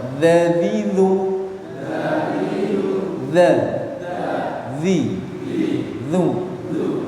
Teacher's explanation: Karena posisinya ujung lidah ditemukan dengan ujung gigi seri bagian atas